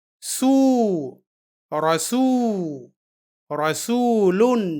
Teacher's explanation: پر پیش ہے اور پیش کے بعد واو ساکن ہے، یعنی یہ واو یہاں سین کے پیش کی آواز کو دو گنی لمبی کرنے کے لیے ہے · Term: واو مدہ